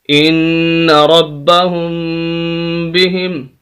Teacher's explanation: نون پر بھی غنہ ہے اور میم پر بھی غنہ ہے